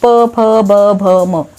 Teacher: ओष्ठ्य वर्ण म्हणजे जिथे ओठांचा वापर आपल्याला करावा लागतो, प, फ, ब, भ, म, बरोबर.